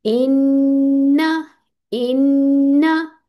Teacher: नून को लंबा नहीं करना, नून को वन काउंट ही पढ़ना है